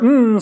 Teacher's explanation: There’s a complete stop in your mouth, but you lower your soft palate, and the air rushes out the only way it can, through your nasal cavity. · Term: nasals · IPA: [m]